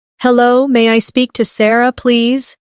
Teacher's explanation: Notice how may I sounds like may-a in fast speech.